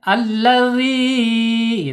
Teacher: Ma'ul jaub yaitu rongga mulut saja. Tidak boleh mengalir udaranya lewat hidung ya. Karena kalau lewat hidung berarti dia tidak dapat ya al jawabnya tidak dapat. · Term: huruf mad